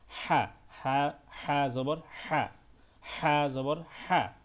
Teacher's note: এই হাটা গলার মধ্যভাগ থেকে উচ্চারণ হয়।